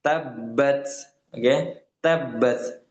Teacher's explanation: Dan bagaimana membaca tasydid ini adalah dengan kita tekankan dulu ya. Fokuskan dalam penekanan huruf yang pertamanya yang berharakat sukun itu ya.